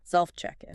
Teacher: So in self-check-in, the stress is kind of on self and the first part of in